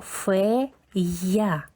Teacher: Після голосної йотована я теж чується. Перший звук ф у нас одна рисочка.